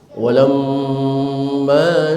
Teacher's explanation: tasdid yang ada di atas huruf mim berlaku hukum gunnah musyaddadah, ditahan selama 2 harokat